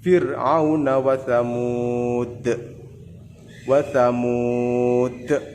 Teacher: Dalnya lebih besar pantulannya. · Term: qalqalah kubro